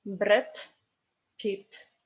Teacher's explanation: Another Russian phonetic law is that d in the end of the word is t.